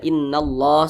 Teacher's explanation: Maka kalimat Allah dibaca tebal, dibaca tafkhim.